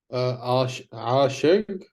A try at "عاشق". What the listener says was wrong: Softer. A bit softer. The ዐyn.